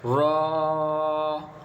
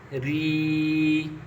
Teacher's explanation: را کے نیچے زیر ہے تو را کو میں نے ذرا باریک پڑھا، کیونکہ تقریباً تختی نمبر 3 میں آپ نے حرکات کے بارے میں قاعدہ پڑھا ہے، اس میں آپ نے را کے بارے میں قاعدہ پڑھا ہے کہ را پر اگر زبر ہو اور پیش ہو تو را کو موٹا پڑھنی ہے، اور اگر را کے نیچے زیر ہو تو را کو باریک پڑھنی ہے۔